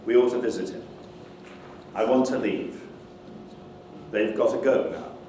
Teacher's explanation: the sequence uh t t is reduced to a single t